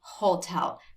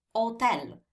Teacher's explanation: We do not say hotel because the H is silent in Italian. We say hotel, like there's no H in the word, because the H is always silent in Italian.